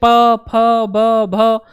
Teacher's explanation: प बोलते ही आपको समझ में आ गया कि जो हमारे ओठ हैं वो दोनों टच कर रहे हैं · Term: ओष्ठ ध्वनि